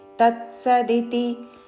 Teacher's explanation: वेदाാ यज्ञाश्च विहिता पुरा ओम तత్తి నిర్దేశో ఓం తత్సదితి తత్సదితి అని స కి సవత్తు పలకూడదు త మీద ఆఘాత పక్కన త కి సవత్తు తత్ ముందు తత్ అని పలికి సదితి తత్సదితి